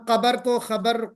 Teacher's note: बाज इलाके के लोग काफ को खा बोल देते हैं